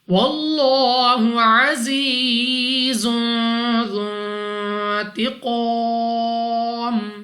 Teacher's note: واللہ عزیز ذو انتقام. لام اف اللہ سے پہلے حرف پر زبر تو اس لام اف اللہ کو پر یعنی موٹا پڑھیں گے.